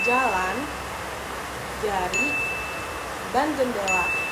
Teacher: suara dihasilkan dari gesekan antara lidah bagian tengah dengan langit-langit keras ataupun yang disebut palatum. Lidah sedikit dinaikkan ke atas dan udara dilepaskan secara tiba-tiba sehingga menghasilkan suara seperti J dalam fonetik internasional. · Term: konsonan J